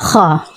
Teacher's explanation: हम जहाँ पर वो कौवा सा होता है वहां से खा अदा होता है , वहां से मतलब वो भी हलक से ही होता है,